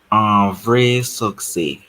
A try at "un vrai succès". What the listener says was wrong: You didn't pronounce the S. However, I didn't hear the sound of the accent. It's what kind of accent is that? This one is E.